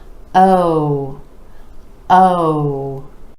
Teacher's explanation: for this sound you want to make sure those lips are really rounding out and stretch the sound give it a little more duration oh oh you don't want it to be oh oh you